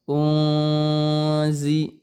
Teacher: nun sukunnya itu samar-samar. Mendekati eng gitu ya. Tapi sebetulnya bukan eng gitu ya. Karena bunyi nun sukunnya itu kemudian diikuti dengan huruf zai.